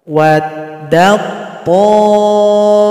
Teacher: ada tasukun berjumpa dengan to, maka tasukun ini langsung gabung kepada to. Jadi kita nggak usah baca lagi ta ini, dal langsung loncat kepada to.